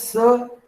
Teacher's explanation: सीन जिसे आप कहते हैं स, गैर मसमू, लसवी, सफीरी है